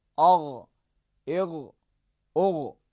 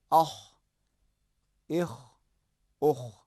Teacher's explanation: غین میں زیادہ خراش کی آواز سنائی نہیں دیتی ہے، لیکن خا کے اندر خراش کی آواز آتی ہے۔